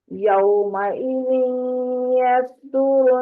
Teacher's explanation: یومئذ یصدر ادغام ہے غننے کے ساتھ